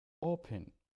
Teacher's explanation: the stress in the first syllable